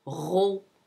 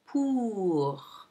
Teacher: there are two phones that are used in standard French. They are the rolled uvular R, ro, and the fricative, the back fricative R